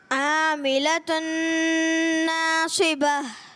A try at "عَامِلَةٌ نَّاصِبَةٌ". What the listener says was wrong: عین کی ادائیگی اور کلیئر کرنے کی کوشش کریں۔